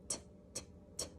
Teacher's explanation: when we make our T sound, you can feel our tongue tip touch that alveolar ridge